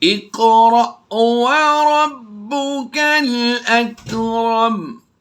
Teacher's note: یہاں پر قاف پر ہم پر بھی کریں گے اور قلقلہ بھی کریں گے۔ حمزہ ساکنہ پر ہم جھٹکا دے کر پڑھتے ہیں